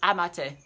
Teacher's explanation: It ends in the schwa sound, not in tio.